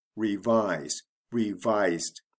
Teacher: the stress does not change even though we add the past tense ending